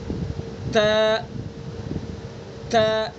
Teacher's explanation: زبان کی نوک کو ثنا علیہ کی جڑ پر لگائیں اور پھر ادا کریں گے